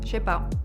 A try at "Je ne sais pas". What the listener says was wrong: Je sais pas. Je ne sais। समझ रहे हैं आप कितना खा रही हैं? ये मतलब खाना नहीं खाया इन्होंने, वर्ड्स खा रही हैं। Je sais pas. ne sais pas.